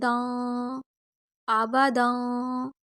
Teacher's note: دال 2 زبر دن نہیں پڑھیں گے، ہم یہاں پہ غنہ کریں گے، 2 زبر ہے یعنی کہ تنوین ہے۔